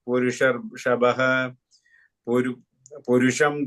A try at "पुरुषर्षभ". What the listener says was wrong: that Purushar Shabha is no visarga at the end.